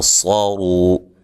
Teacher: را کے اوپر پیش ہو تو را کو موٹا ادا کرتے ہیں، را کے اوپر پیش یا زبر ہو تو را کو موٹا ادا کیا جاتا ہے.